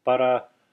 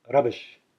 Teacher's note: In Sanskrit, there's no such thing as a like we have in English. It's always made with a flip of the tongue, a throwing of the tongue up against the roof of the mouth.